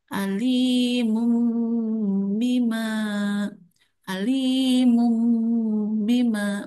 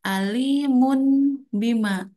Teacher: Huruf ba ya. Cara bacanya nunnya atau tanwin itu ditukarkan kepada huruf mim dan dibaca dengung mimnya. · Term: iqlab